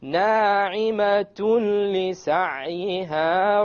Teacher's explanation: we have the merging, the idgham, but we have it without ghunna